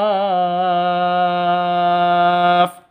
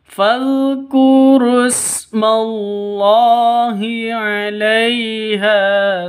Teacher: Ha panjang 2 ketukan karena ada alif diawali dengan fathah.